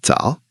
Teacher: Third tone. So, it goes down and up. Tal. It is so simple, so natural. · It just means morning. Third tone, so it goes down and up.